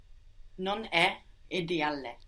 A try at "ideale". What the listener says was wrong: Good, but careful not to pronounce 2 L's on the end there. Ideale. No, we want to say ideale. Non è ideale.